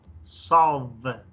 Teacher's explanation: solve with a V. The teeth touches the lip.